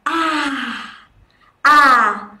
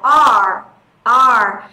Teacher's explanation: nếu như chúng ta đọc âm R R tức là chúng ta uốn cong lưỡi lên thì tức là chúng ta đang thêm âm r vào rồi